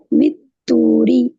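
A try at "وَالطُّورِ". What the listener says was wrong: பா வந்து திக்கா ஓதணும், ஹெவி லெட்டர்.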